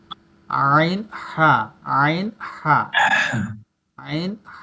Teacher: একেবারে গলার মাঝ থেকে